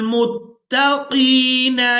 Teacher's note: कॉफ को पूरा अदा करेंगे और इसको याए मद्दा के साथ मिलाते हुए खींचकर अदा करेंगे